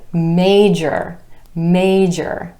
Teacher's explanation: 2 syllables with emphasis on the A vowel sound in the first syllable